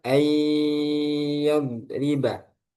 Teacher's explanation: Contohnya ayyad riba, itu masih ada sifat gunnahnya. Ay, masuk hidung. Ayyad riba.